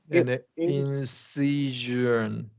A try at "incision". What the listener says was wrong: Good. Yeah, that was good.